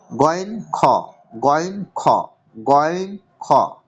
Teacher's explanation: 3 নম্বর মাখরাজ, হালাক বা কণ্ঠনালীর শেষ ভাগ থেকে উচ্চারিত হয়